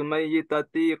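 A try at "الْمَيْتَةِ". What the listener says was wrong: Jangan mayyitati, enggak usah mayyitati ya. Dalam Al-Qur'an misalnya hurrimat 'alaikumul maytatu, bukan baca hurrimat 'alaikumul mayyitatu, enggak seperti itu. Coba cek Al-Qur'an. Hurrimat 'alaikumul maytatu. Iya-nya sukun.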